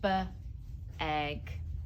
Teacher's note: And we want to elongate the initial sound, B, egg.